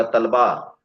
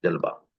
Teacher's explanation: واو جو ہے وہ بے میں بدل جاتا ہے، یعنی واو کا الگ تلفظ وہاں نہیں ہے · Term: کلکتیا اردو